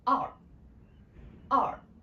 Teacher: It's actually dropped from very high pitch to very low pitch. And with the R sound in the end, which means we need to twist our tongue a little bit in the end.